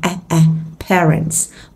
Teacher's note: sẽ là âm AE Miệng hơi bẹt ra